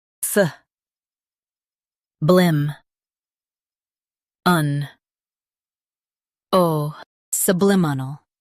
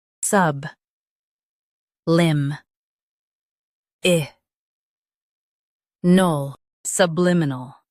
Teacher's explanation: US stresses blim. UK stresses lim.